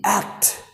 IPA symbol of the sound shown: æ